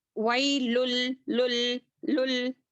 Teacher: यहाँ पर गुन्ना नहीं किया जाएगा। लुन जो है तनवीन के बाद लाम आ रहा है तो यहाँ पर हम क्या करेंगे इदगाम करेंगे बिला गुन्ना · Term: इदगाम बिला गुन्ना